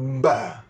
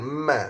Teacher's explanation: Sentuhan berat ba. Ba sentuhan berat, ma sentuhan ringan. Tapi tutup, dua-dua tutup mulut.